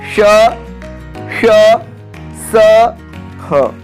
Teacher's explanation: जिनका उच्चारण करते समय वायु मुख से रगड़ खाकर ऊष्मा पैदा करती है, यानी उच्चारण के समय मुख से गर्म हवा निकलती है, उन्हें ऊष्म व्यंजन कहते हैं।